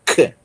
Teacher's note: Nós temos o QI, que é o som do capa aspirado, né? É um som de K aspirado. É como se você pronunciasse o som do capa, mas soprando, né?